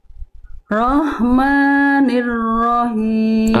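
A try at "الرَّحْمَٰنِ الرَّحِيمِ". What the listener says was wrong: Oke, itu masih hak besar. Oke, jadi harus lembut.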